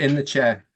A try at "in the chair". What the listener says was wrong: In the chair. It's not in the chair, okay? It's in the chair, okay? There's no R, okay?